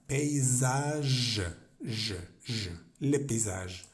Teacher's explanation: No es como en español que suena G, como el sonido J, sino que en francés vamos a hacer como vibrar, como si fuera una Y, como una Y.